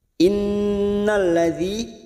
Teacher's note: nun yang bertasdid gunnah musaddadah kita tekan selama 3 harokat.